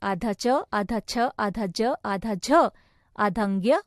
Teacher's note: तालव्य यानी कठोर तालु से